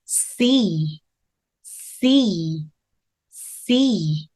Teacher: 굉장히 날카로운 소리가 윗니 아랫니 간격 사이로 빠져나갈 수 있게 해 주세요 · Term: 날카로운 S 사운드